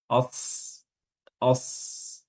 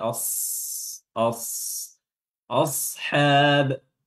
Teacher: Ya. Sotnya eh, Sotnya walaupun sukun dia tetap memiliki sifat tebal, ya, karena sot itu huruf-huruf isti'ala, os, os, ya, bukan s tapi os, os, ashab, Ya, hanya dibaca dua harakat mat tabi'i.